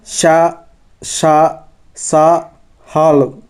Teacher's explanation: ఊష్మాలు అనేవి ఊది పలికేవి, గాలిని బయటికి ఊదుతూ పలికే అక్షరాలను ఊష్మాలు అంటారు